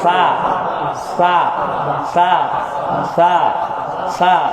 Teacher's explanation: সা পাতলা, জিহ্বার আগা সামনের দাঁতের আগার সাথে লাগবে।